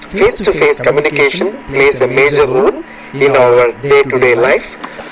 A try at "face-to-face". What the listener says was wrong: Okay, that A sound, face, day, play. So you need to make that vowel sound longer. Again, day, play, face, face-to-face. So you're making not quite long enough.